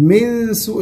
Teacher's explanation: النون في من سوء النون مخفاة